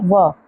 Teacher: जिनका उच्चारण दंत और ओष्ठ दोनों से मिलकर होता है, वे क्या कहलाते हैं, दंतोष्ठ व्यंजन।